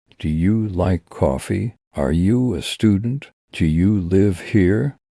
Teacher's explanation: For yes, no questions. Your voice usually goes up at the end. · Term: rising and falling tone